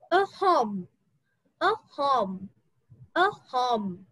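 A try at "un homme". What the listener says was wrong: It's not a home, okay? A nom. Okay, a nom. Yes. H is silent. Remember, H is silent. becomes liaison. We have to do liaison. So N and N will become the sound A num. A num.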